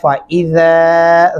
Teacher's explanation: ज़ाल को लंबा करेंगे क्योंकि सामने अलिफ है